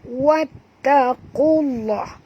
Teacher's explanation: lam pada lafaz jalalah dibaca tebal ya